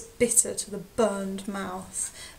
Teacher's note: aggressive B sound we call this plosive okay and it sounds like they're spitting as they say it